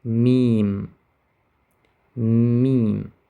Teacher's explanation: Secondly, you notice that meme is said by placing the upper lip and lower lip and closing them together and releasing